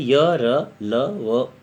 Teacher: इसमें हवा मुंह के विभिन्न भागों को बहुत आंशिक रूप से छूती है, स्पष्ट रूप से नहीं छूती है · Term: अंतहस्थ